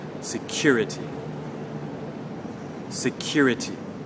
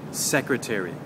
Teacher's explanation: the stress now is on the second syllable, the cure part